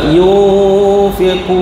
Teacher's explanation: Nun bertemu dengan fa ikhfa hakiki. Dengung juga kat situ. Dua harakat.